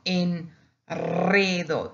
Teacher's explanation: you see the single R after that N, it becomes double